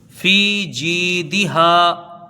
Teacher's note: فی جی ہے نا، دال کے نیچے زیر ہے، اس کو جلدی پڑھیں گے، ہا کے ساتھ الف مدہ ہے، اس کو ایک الف کے برابر کھینچ کے پڑھیں گے